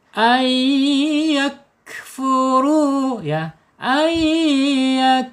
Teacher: Jadi melebur dengan dengung ditahan dua harakat. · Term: idgham bigunah